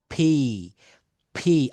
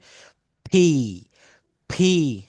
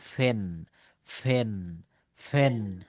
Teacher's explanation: আগে দুই ঠোঁট এক জায়গায় করেন, তারপর জোরে একটা নিঃশ্বাস বের করে দিতে হবে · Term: ওষ্ঠধ্বনি